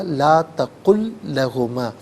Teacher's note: وہ لام مشدد ہے، تو اس کو جماؤ کے ساتھ ادا کیا جائے گا